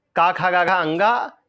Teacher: का, खा, गा, घा, अंगा, छोटा, बड़ा, हा, और विसर्ग को हम कंठ से बोलते हैं